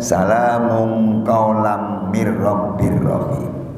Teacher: Maka hukumnya juga idgham bila gunnah. Tanwin kasroh bertemu dengan Ra, hukumnya idgham bila gunnah.